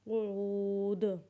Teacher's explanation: جب وقف کے بعد پڑھیں گے تو دال کے اوپر قلقلہ کریں گے، جیسے قعود